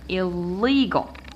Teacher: counted as a syllable so when you have words with prefixes we stress the second syllable which comes after the prefix